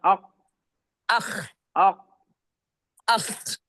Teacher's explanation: आपका नरम आपका नरम नहीं सख्त तालुक लग जा रहा है इसलिए वोफ काफ निकल रहा है आपका।